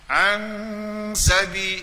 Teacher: Situ ikhfa hakiki. An sabi, dua harakat dengung gunah